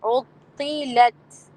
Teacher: اب عطلت میں لام کو باریکی رکھنا ہے، لام کو موٹا نہ کرنا ہے غلطی میں. عطلت، تو صرف موٹا ہے اور عین باریکی ہے.